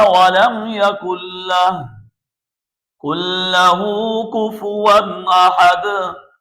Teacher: یہاں پر تنوین کے بعد حمزہ حروف حلقی میں سے آیا ہوا ہے، اس لیے تنوین کو ظاہر کر کے پڑھیں گے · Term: اظہار